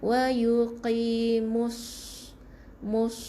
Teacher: huruf sad tu kita akan bunyi dengan tebal